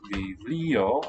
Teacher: The B is now a fricative.